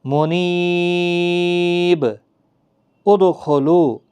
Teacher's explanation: منیبین ادخلوا، منیبین ادخلوا، یہاں بھی دو زیر کی تنوین تھی با کے نیچے، اب وقف جب کریں گے تو با ساکن ہوگا، اس پر قلقلہ بھی ہوگا